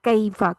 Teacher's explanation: کیفا میں قیفا نہیں کرنا اس کو، کیفا، کاف بھی باریک ہے نا تو اس کو کیفا کرنا ہے